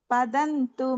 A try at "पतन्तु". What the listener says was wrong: பதந்து சொல்லக்கூடாது. பத்தந்து. दैत्यं हयग्रीव महन्हयास्यो ரணே முராரிஸ் त्वदनुग्रहेण सदा जगन्मङ्गलदे त्वदीयाः पतन्तु मे मूर्ध्नि कृपा कटाक्षाः.